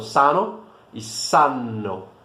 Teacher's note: são palavras muito semelhantes, cuja única diferença é a duração dessa consoante